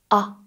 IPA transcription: a